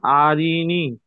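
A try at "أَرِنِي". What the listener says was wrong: আপনি একটু আগে বললেন যে হারাকাতকে তাড়াতাড়ি পড়তে হবে, টান দেওয়া নিষেধ। আ রি নি বলে টান দিলেন। আরিনি। আরিনি।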